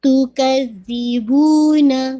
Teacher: زال ہے, make sure زائی کا مخرج نہیں آئے